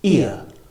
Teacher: this is a combination of e and uh but it's pronounced within one syllable